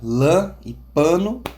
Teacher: vogal A fechada, como na palavra lã e pano